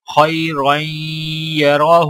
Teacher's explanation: را کے اوپر 2 زبر اور یہاں پر را کے اوپر زبر ہے، لہٰذا دونوں را موٹی پڑھی جائیں گی، اور ہا کے اوپر الٹا پیش ہے تو لہٰذا ہا کو 1 الف کے برابر کھینچ کر پڑھا جائے گا۔ اور آگے گول دائرہ وقف کی علامت ہے تو لہٰذا یہاں پر وقف بھی کیا جائے گا۔